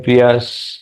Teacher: शांति तो वैसे ही यहां यह सच में प्रियस तो य य का जो विसर्ग है उसको हमने स में तब्दील किया मतलब स नहीं बोला हवा छोड़ी अपने ओठों के दांतों के